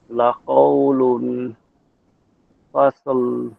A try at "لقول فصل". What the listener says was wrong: এই যে লাকাউলুন, এখানে একটু গুণা করেন, লাকাউলুন ফাস, তাহলে হবে